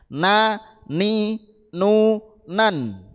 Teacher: ujung lidah mengenai gusi gigi depan atas